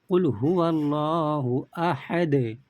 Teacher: حرف قلقلہ میں سے دال آ رہا ہے تو ہم لوگ قلقلہ کر کے پڑھیں گے۔ قُلْ هُوَ اللَّهُ أَحَدٌ، यहाँ पर देखिए दाल के ऊपर दो पेश है, दो पेश पर वक़्फ़ करना हो तो आखिरी हर्फ पर जज़म दे के सांस तोड़ेंगे।